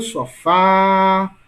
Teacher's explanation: Qual é a sílaba mais longa? Fá. Portanto, Fá é a sílaba mais forte, né?